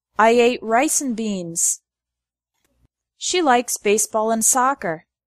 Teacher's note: The word and often becomes n.